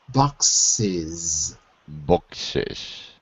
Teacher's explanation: just notice that the S sometimes sounds like a Z.